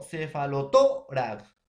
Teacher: Cefalotórax es grave, profesor, o llana. Tiene la mayor fuerza de voz en la penúltima sílaba.